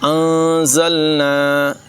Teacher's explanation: انزلنا یہاں پر اخفا کریں گے، نون ساکن کے بعد زا حروف اخفا میں سے ہے، غنہ کر کے پڑھیں گے